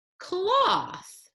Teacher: th which stands for the unvoiced sound in cloths